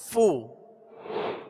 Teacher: اور اس کی مخرج فا کا اوپر کے دونوں دانتوں کے کنارے اور نچلے ہونٹ کا تر حصہ، یہ اس کا مخرج ہے